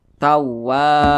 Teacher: Maka huruf wa dibaca panjang karena dia berbaris ke atas dan posisinya tepat berada di belakang huruf alif. Matobi'i panjangnya 2 harakat atau kira-kira 2 ketukan.